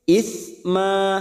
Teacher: Dadu, ada mat yang bertemu dengan hamzah di lain kalimat, mat jaiz munfasil, 4 harokat kita panjangkan. Du isma, isma huruf sa, bukan sa tetapi t s a, maka bunyinya isma.